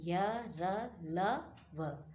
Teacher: ये वर्ण स्वर और व्यंजन के बीच की स्थिति माने जाते हैं। इन्हें अर्ध स्वर भी कहा जाता है।